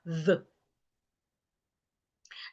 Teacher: you put your tongue in between your teeth and you make vibration, which is the sound of the voiced th